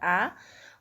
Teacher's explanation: आ बोलने में पीछे जीभ चला जाता है। मुख्य विवर विवृत है, यानी पूरा खुल जाता है।